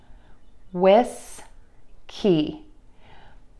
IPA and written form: wɪski (WHISKEY)